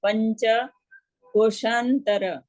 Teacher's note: પંચ પ ઉપરનો અનુસ્વાર યંગના સ્વરૂપમાં છે અને ચ આખો બોલવાનો છે